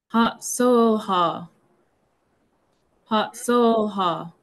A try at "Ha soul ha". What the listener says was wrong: say that little ha a little bit longer. Ha soul ha.